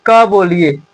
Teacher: क को बोलते समय अंत में अ भी आ रहा है।